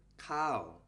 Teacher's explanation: for our first word we use the falling tone and we get the word cow